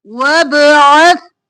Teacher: نہیں پڑھنا واو زبر با وب عین زبر سا عت سا نرمی سے عین گلے کے درمیان سے